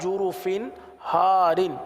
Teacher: ایک بار پھر قواعد کو سمجھ لیجئے، دیکھیں جرف ہار، فا کے نیچے دو زیر کی تنوین ہے، تنوین کے بعد ہا ہے، ہا حروف حلقی میں سے آ رہا ہے، لہٰذا یہاں پر اظہار کا قاعدہ ہوگا، گنہ نہیں کریں گے